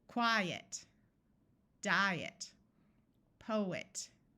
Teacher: in all of these words the first syllable is accented